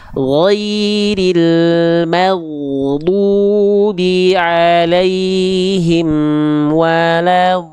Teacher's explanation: Syiddah itu artinya tertahan atau terputus suara. Mim tidak tertahan. Dia tawasud ya, dia mengalir sedikit suaranya.